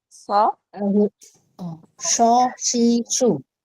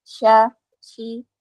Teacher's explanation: itu suaranya tidak menyebar kalau syin itu ada sebaran Ada sebaran udara di dalam ya. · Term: huruf sh